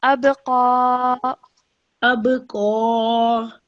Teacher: So this ba is a qalqala letter. So when you say this, you must bounce off the letter ba.